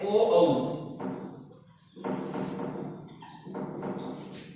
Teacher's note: ओ औ कंठोष्ठ, इनके भी दो उच्चारण है, कंठ और ओष्ठ।